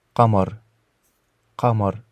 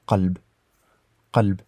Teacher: c'est un son vraiment qui vient du fond de la gorge et qui est différent du K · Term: son Q